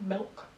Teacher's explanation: the L sound gets replaced by something that's more like a vowel. So the word milk becomes something a bit more like milk with a with a a sort of a vocalic sound rather than a consonant sound um in the middle. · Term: L vocalization